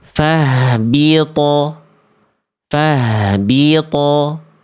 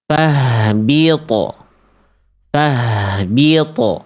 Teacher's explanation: Kalau diibaratkan fathah itu satu harokat, fahbito. Kalau sukun itu setengah harokat, fahbito. Beda bunyinya. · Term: qalqalah